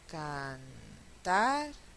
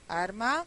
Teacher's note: Final de sílaba. También se va a escribir como una sola R, pero se va a pronunciar siempre simple.